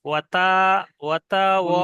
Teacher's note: ওয়াতার টান হয়ে যাচ্ছে যেন, তা একদম টান হবে না